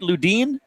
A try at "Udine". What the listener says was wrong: It's actually Udine. Most people get it wrong. You're pretty close, so I can't lie. L and the J, they're silent. Just kick them out.